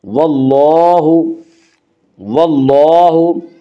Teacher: واللہ لام کے اوپر کھڑا زبر ہے، کھڑا زبر قائم مقام ہے الف کے، اس لیے کھڑا زبر کو ایک الف کے برابر کھینچ کر پڑھیں گے